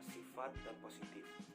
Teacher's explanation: Direalisasikan sebagai bunyi F jika dari unsur serapan dan sering divariasikan dengan alofon P